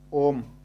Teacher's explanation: ओम का उच्चारण करते हैं तो हम क्या करते हैं कि ओ को ज़्यादा लंबा करते हैं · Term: प्लुत स्वर